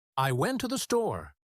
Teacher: The words to and the become so weak that they almost disappear. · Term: unstressed words